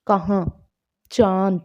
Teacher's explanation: तो अनुनासिक जिन व्यंजनों का उच्चारण मुख और नाक दोनों से होता है, मतलब जब हम उच्चारण करते हैं तो वायु जो होती है वो मुख और नाक दोनों से बाहर निकलती है